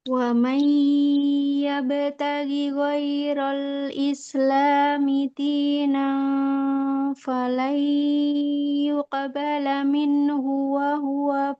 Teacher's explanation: ba itu bunyi qalqalahnya kuatin, jangan lemah.